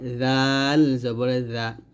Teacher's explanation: জিম উচ্চারণ করার সময় দাঁতের সাথে টাচ করবে না। জালটা জিব্বার আগা উপরে দাঁতে আগে লাগাবেন পাতলা করে জাল জবর জা।